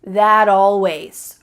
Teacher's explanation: This isn't always done, but it's often done when native speakers are talking quickly. We link together words by making the final T change into a D.